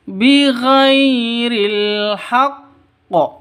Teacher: ghai sifat lin lentur, tidak boleh disentak, tidak boleh dipanjangkan.